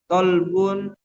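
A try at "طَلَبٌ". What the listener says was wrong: Tolabun. Bi fathil lam.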